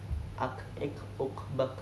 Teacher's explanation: Yaitu di pangkal lidah, dia sedikit bersama dengan makhrajnya qaf, cuman dia lebih maju.